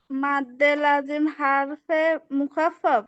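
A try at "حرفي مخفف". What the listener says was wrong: হারফে না, হারফি মুখাফাফ।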